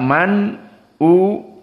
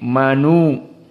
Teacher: dibaca man u dalam keadaan an-naql menjadi manu